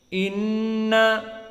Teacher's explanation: Inna masuk ke hidung, makhrajnya dari khaisum. Inna, maka jika ditutup hidung kita akan failed, akan gagal pengoperasian dari nun musyaddadah. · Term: gunnah